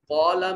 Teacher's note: قوف حرف استعلا ہے، موٹا اور پر کر کے پڑھا جائے گا مفخم انداز میں